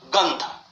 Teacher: इसके उदाहरण है गंध, ग लघु है लेकिन इसके बाद अंध संयुक्ताक्षर है। संयुक्ताक्षर से पूर्व ग है, लघु होने के बाद भी इसकी दो मात्रा गिनी जाती है।